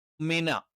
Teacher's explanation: നാവിന്റെ രണ്ട് ചുണ്ടുകളും മൃദുലമായി അല്ലെങ്കിൽ മൃദുവായി അടച്ചു വെച്ചിട്ട് മിന. ന എന്ന് പറയുമ്പോൾ നാവിന്റെ അറ്റം മേലെ രണ്ട് മുൻപല്ലുകളുടെ മോണയുടെ പിൻഭാഗത്ത്